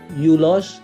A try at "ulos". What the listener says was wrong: Pertamanya memang menggunakan huruf U, tapi dalam bahasa Indonesia kita membacanya ulos.